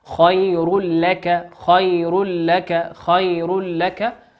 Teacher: تنوين أتى بعده حرف اللام واللام من حروف الإدغام بغير غنة